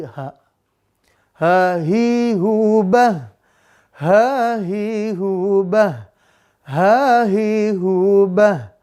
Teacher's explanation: H itu makhroj terdalam tenggorokan bawah